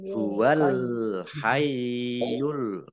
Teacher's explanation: alif lam qamariyah, ditandai dengan lamnya dibaca sukun